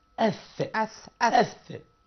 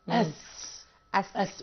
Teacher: يعني أنا في الثاء لساني بيطلع سنة كده، إنما في السين ورا سناني. وبيسموه حرف صفير لأنه أس.